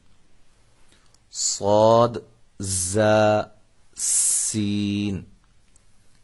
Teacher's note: یہ تین حروف ادائیگی میں آپ محسوس کر رہے ہوں گے کہ ان تینوں حروف میں سیٹی کی آواز پیدا ہوتی ہے۔ اب فرق یہ ہے کہ صاد کی جو سیٹی ہے یہ موٹی ہوگی، زا اور سین ان کی سیٹیاں جو ہیں وہ سیٹی کی جو آواز ہے وہ باریک ہوگی۔